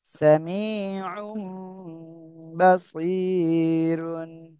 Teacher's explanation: ওই যে তানবিনের ভিতরে যে নুন সেকেন্ডটা রয়েছে, এটা আমাদের পরিবর্তন হয়ে আমাদের মিমটা পড়তে হবে